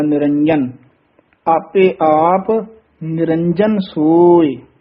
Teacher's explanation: ਜਜੇ ਨੂੰ ਕਸ ਕੇ ਬੋਲਾਂਗੇ ਤਾਂ ਇਹ ਸ਼ੁੱਧ ਬੋਲਿਆ ਜਾਏਗਾ ਨਹੀਂ ਤਾਂ ਯ ਬੋਲਿਆ ਜਾਏਗਾ